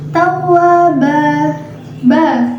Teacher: Tawwaba ba terdapat hukum bacaan mad iwad karena ada tanwin fathah yang diberhentikan dan cara membacanya tanwinnya menjadi hilang dan diganti dengan fathah saja dan menjadi panjang dua ketukan